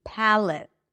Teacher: It's a P sound, pa, as in cat, an L sound, schwa, and a T. Palate. It's a light L, though it's darker for many speakers.